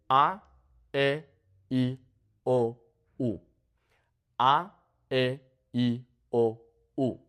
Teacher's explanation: English speakers tend to elongate the sounds, but in Spanish, they're a bit more abrupt.